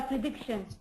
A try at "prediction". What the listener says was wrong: You said predi a little bit more of an E. I want it shorter. Earthquake prediction.